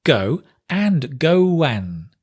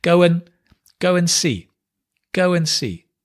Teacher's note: Go and the D drops. So just to confuse you, we add a w and we drop the d. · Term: link sounds